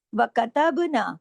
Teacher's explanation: کتبنا کے اوپر با کے اندر کلکلا ہوگا